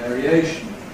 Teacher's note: When we have this suffix ‘-ation’ that attracts stress to itself, we get secondary stress on the /eə/, so it remains with the quality of /eə/ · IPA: /ˌveəriˈeɪʃn/